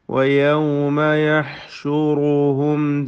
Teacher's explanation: റാഇന് തഫ്ഖീം കൊടുക്കുക. യഹ്ഷുറുഹും സാക്കിന മീം ഇൽഹാർ ഷഫവി നൽകി മണിക്കാതെ വെളിവാക്കി ഉച്ചരിക്കണം.